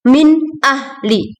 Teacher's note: alif atau hamzah dibaca dengan idhar halqi atau jelas